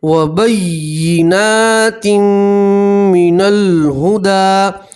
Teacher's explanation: ना यहाँ तनवीन का इदगाम है, तनवीन को मीम के अंदर मिला देंगे और 1 अलिफ के बराबर गुन्ना भी करेंगे